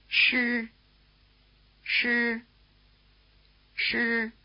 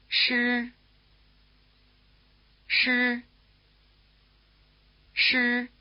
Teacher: keeping your tongue curled back throughout.